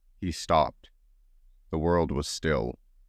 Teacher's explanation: The break after stop forces a pause, mirroring the character's sudden halt and the ensuing stillness. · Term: deliberate pause